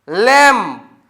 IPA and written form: læm (Lamb)